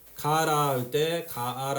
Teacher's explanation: 가아라 할 때 아가 탈락해서 가라가 된 거고